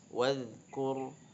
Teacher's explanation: Nah, kalau dia hamas dia jadi waz, harus keluar nafasnya, udaranya. Kalau ini tidak, wadzkur. Nah, kurnya ro-nya bertanda sukun, kafnya harokat dhammah, maka ro-nya tafkhim ya, tebal ya.